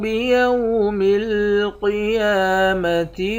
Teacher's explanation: اس والے قاف کو موٹا پڑھیں گے، یا کے اوپر کھڑا زبر ہے، کھڑے زبر کو 1 الف کے مقدار کھینچ کر پڑھتے ہیں۔